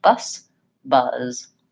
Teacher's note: when the word ends with a Z or another voice sound, the vowel is slightly longer